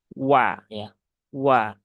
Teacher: wau itu satu-satunya huruf yang dia monyong ya walaupun fathah tapi di awalnya saja dan dia tipis ya Wa bukan bukan wa tetapi wa tapi juga jangan menjadi uwa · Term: huruf wau